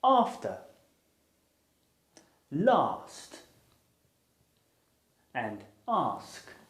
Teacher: it's a vow sound and its technical name is the open back unrounded vowel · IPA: ɑː